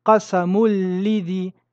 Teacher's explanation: Nous fusionnons le nun dans le lam et nous ne prononçons pas de runna ici car c'est un lam. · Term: idram bi ghayri runna